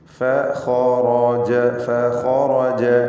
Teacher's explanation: ഖാഇനും റാഇനും തഫ്ഖീം കൊടുക്കണം, തടിപ്പിച്ച് സ്വരഭാരത്തോടെ ഉച്ചരിക്കണം. മറ്റക്ഷരങ്ങൾക്ക് തഫ്ഖീം വരാതെ ശ്രദ്ധിക്കുകയും വേണം.